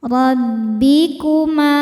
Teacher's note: rob dibaca tafkhim karena berharakat fathah cara bacanya ditebalkan robbi kuma ma mad thabi'i dzahiri sebab ada alif didahului fathah